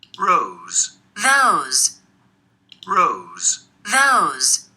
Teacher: we can see that in rows the voiced fricative is before a pause and in those there is a white fricative before and after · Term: devoicing